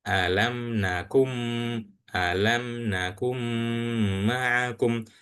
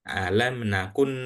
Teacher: seakan-akan huruf nunnya ini enggak ada. Seakan-akan huruf nunnya ini enggak ada dan langsung baca lewat ke ee langsung lewat ke huruf mim. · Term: idgham